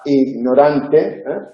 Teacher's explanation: G en posición implosiva seguida de nasal, ignorante. Debe pronunciarse debilitada, ignorante, como aproximante, pero no debe confundirse con la velar, no debe hacerse sorda